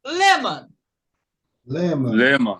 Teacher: Quando você tem a sílaba mais forte, que é o lê, ela sobe. Se uma sobe, as outras descem.